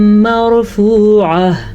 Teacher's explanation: نون بھی آ سکتا ہے اور یا بھی آ سکتا ہے. مرفوعہ، را ساکن ہے اور اس سے پہلے زبر ہے تو اسی لیے را کو ہم پر پڑھیں گے